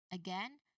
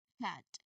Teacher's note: So your throat should be quiet here or it should not vibrate. Now the vowel ah here it opens the mouth wide immediately after the puff of air is released.